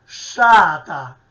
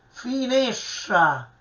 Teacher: Vedete, questo gruppo STR che io sto evidenziando, noi lo pronunciamo sempre cacuminale, sciata, sempre strisciando, retroflettendo la lingua all'indietro sul palato superiore